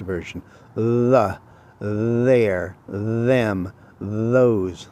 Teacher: The, there, them, those. Those are all voiced TH sounds.